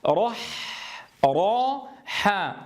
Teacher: انظروا كيف ينزل الصوت من التفخيم ثم إلى الترقيق